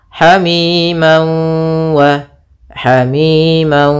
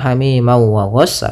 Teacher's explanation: ini namanya idgham bighhunah atau idgham maal ghunah cara membacanya yaitu masukkan tanwinnya ke wau sambil ditahan gunahnya dua harakat Hamim wa Hamim tidak langsung Hamim ma wa ghasaq tapi tahan